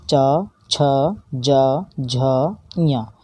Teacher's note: आप बोल कर देख लीजिए, च, छ, ज, झ, इया, ये हमारे सब तालु की मदद से बोले जाते हैं, इसलिए इनको हम कहेंगे तालव्य · इनको तालव्य बोलते हैं, जो तालु की मदद से बोले जाएं